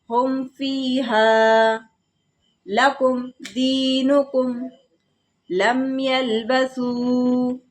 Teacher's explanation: میم ساکن کے بعد یہاں پر فا آ رہا ہے تو یہاں پر ہم میم کو ظاہر کریں گے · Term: اظہار شفوی